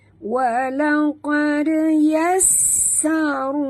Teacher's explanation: Okey, dekat sin ada tasydid, ada dua sin. Jadi bunyikan sofir pada sin yang pertama yang mati